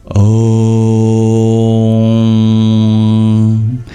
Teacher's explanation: that o sound is said to be a combination of two sounds ah and O